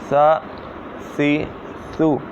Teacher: یہ زبان کا سرا اور اوپر کے دانتوں کے اندرونی کنارے سے ادا ہوتا ہے